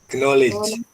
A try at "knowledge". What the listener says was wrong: Nggak boleh, K-nya hilang ya Mas, jadi tinggal knowledge.